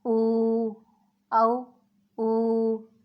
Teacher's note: اگر پیش آ جائے تو وہ واو مدہ ہوتا ہے اور واو مدہ کو ایک الف کے برابر کھینچ کر پڑھتے ہیں